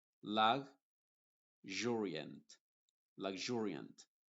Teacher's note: en vez de tener una Z inglesa tenemos una Z H inglesa Esa es la forma como yo lo llamo y el sonido es como J